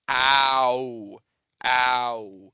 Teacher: It's kind of this big, broad sound that starts in the back of your mouth and comes out to the front.